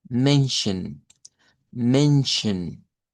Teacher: Men, con una E abierta hasta la E, men. Y luego la SCH se hace como SH y esta suena como Shva